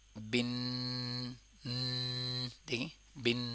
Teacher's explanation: Totally مکمل طور پہ ناک سے آواز ادا ہوتی ہے اور اس کے اوپر تھوڑا ہولڈ بھی کرتے ہیں، جیسے کہ بن، دیکھیں بن ناس. غنہ میں یاد رکھیے گا منہ سے آواز نکلتی نہیں ہے، ٹوٹلی ناک سے.